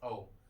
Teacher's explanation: औ का आ plus ओ से मिलकर औ बनता है, तो हम देखते हैं आ कंठ से बना है, ओ किससे बना है, ओ ओठ से बना है, तो औ का उच्चारण स्थान भी कंठ ओष्ठ हो जाएगा